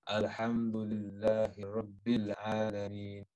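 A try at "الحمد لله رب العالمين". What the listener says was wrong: Slight bounce on Alhamdulillah. Alhamdulillah. Listen, just hear yourself. Say it, yeah, and you hear bounce. Alhamdulillahi Rabbil Alameen.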